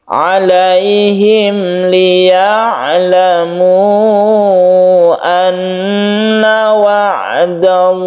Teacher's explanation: Izhar artinya jelas, suara mimnya itu jelas dan tidak berdengung. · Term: izhar syafawi